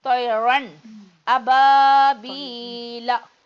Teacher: தன்வீனை வெளிப்படுத்தணும். ரன் அந்த இன் சவுண்டை நம்ம வெளிப்படுத்தி காட்டுறோம். இந்த இடத்துல இன்னு இருக்கு, தன்வீன் இருக்குன்னு வெளிப்படுத்துறோம். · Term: இல்ஹார்